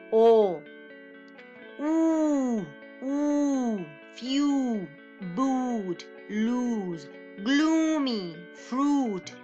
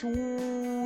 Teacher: so if you see this one is very rounded lips who you have to round your lips and then you have to go at the back your tongue but very close to the roof of the mouth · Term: long vowels